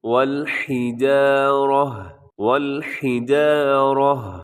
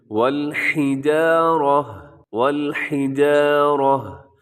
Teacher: لکھا ہوا ہے والحجارۃ، لیکن وقف کریں گے تو گول تا جو ہے آخر میں یہ ہا کے ساتھ چینج ہو جائے گی